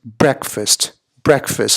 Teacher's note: So you want the emphasis, the stress on the first syllable, breakfast.